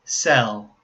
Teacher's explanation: so the first one cell has the dark l sound